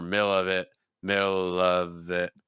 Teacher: I would again go lower in pitch on of it. Instead of middle of it, more middle of it, middle of it.